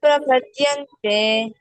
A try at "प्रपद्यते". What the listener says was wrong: not prapadyante, this is prapadyate.